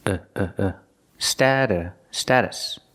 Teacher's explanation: sta status and the t is a fast D stata status the second syllable is not stressed so it's pronounced very relaxed